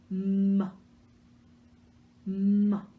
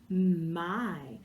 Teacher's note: Remember, it's just like saying good, or m, okay? And we make the M sound by pressing our lips together, and that sound comes through our nose.